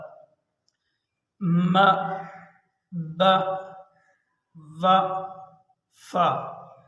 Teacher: پہلا مخرج ہے ہونٹوں سے ادا ہونے والے حروف